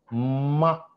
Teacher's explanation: For example చూడండి, మా ఇది బైలేబియల్, ఓకే, మా అనే బైల అంటే గాలిని రెండు పెదాలు మూసేసి గాలిని ఆపేస్తాం. మరి వదిలేటప్పుడు ఎలా వదులుతాం అంటే నోట్లో నుంచి రాదు, ముక్కులో నుంచి వస్తుంది. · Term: నాజల్స్